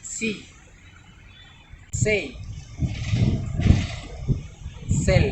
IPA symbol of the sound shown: s